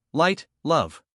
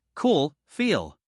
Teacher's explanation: Light L at the beginning of words, light, love. Dark L at the end, cool, feel. Tip, touch the tongue tip behind your teeth.